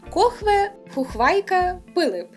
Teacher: І теж стандартна для говорів лівобережжя риса, коли звук «ф», чужий для української мови, заміняється іншими, простішими у вимові – «хв» або «х» чи «п».